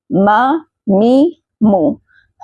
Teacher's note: مخرج دونوں ہونٹوں کے بیرونی خشک حصوں کو ملانے سے میم ادا ہوتا ہے۔